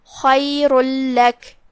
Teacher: پھر حرف اللام ہے، لام حروف الادغام بغیر غنہ میں سے ہے، جو کہ ادغام کا معنی ہے حرف کو حرف میں داخل کر دینا، لہذا ہم یہ تنوین کو لام میں داخل کر کے تشدید کے ساتھ لیکن بغیر غنہ کے یہ حکم کو ادا کریں گے۔